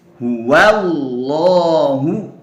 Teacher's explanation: Nah, sekarang coba lihat huwa. Nah, wa berharokat fathah. Nah, setelahnya lafdzul jalalah, maka lam pada lafdzul jalalah ini dibaca tebal.